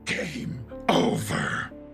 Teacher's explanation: he distinctly pronounces the R sound in over.